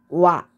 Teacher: 오 소리를 낼 때 입모양을 가지고 있다가 얼른 단모음 아를 발음하게 되면은 와 하는 소리가 나요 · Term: 이중모음